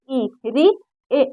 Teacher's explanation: जीभ के आगे वाले भाग से बोला जा रहा है